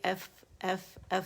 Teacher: نچلے ہونٹ کا پیٹ اٹھے گا اور کناروں کو آرام سے لگ جائے گا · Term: فا باریک